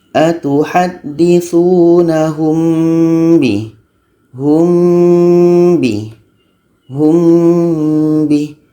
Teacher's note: Kuncinya adalah kita pastikan mim mati itu bertemu ba, dan setelah itu baru kita baca dengan dengung 2 harakat.